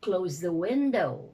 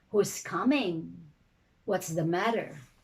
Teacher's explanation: you have single falling intonation